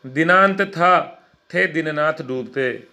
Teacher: इस काव्य पंक्ति में एक ही उच्चारण स्थान दंत से उच्चरित होने वाले अनेक वर्णों त थ द न की आवृत्ति हुई है